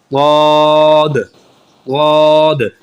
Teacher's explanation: ضاد کے اندر موٹاپا ہے، تفخیم ہے، اور یہ تھوڑا سا دباؤ آتا ہے اس کے اندر